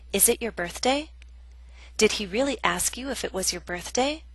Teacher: our voice goes up there is rising intonation